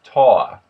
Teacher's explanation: the oi has an ah sound to it. So toy becomes taw.